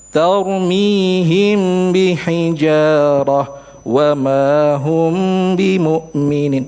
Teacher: Sering kali terjadi kesalahan ketika kita mengucapkan membaca hukum ikhfa syafawi ada huruf mim sakinah bertemu dengan huruf ba. Contoh, kita tidak menyempurnakan gunnah secara total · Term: tidak ada baqail gunnah